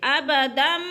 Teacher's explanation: اس میم کو پڑھیں گے اور با کو نہیں پڑھیں گے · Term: اقلاب